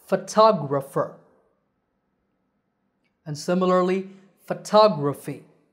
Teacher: the next two words are photographer and photography in these words the stress is on the second syllable it becomes a long tah and the other vowels become short